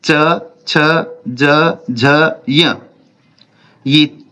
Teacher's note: ये तालव्य वर्ण है। इनका उच्चारण स्थान तालु से होता है, इसलिए इनको तालव्य कहते हैं।